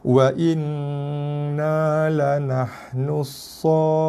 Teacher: Khusus kat sini kita ada satu sabdu ataupun tasydid atas huruf nun. So kena tekan, kemudian dengung, kemudian lepaskan dengan baris dia.